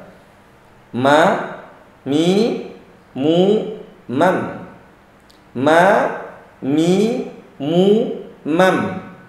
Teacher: Kemudian huruf ma sendiri hanya bertemu bibir atas, bibir bawah. Hanya ketemu, jangan ditekan.